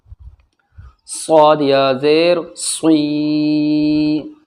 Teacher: صاد یا زیر صی، صاد جو ہے وہ سختی کے ساتھ میں پڑھا جاتا ہے۔ صاد کو پڑھتے وقت آواز ہماری سخت ہو جاتی ہے، سیٹی کی طرح تیز آواز ہو جاتی ہے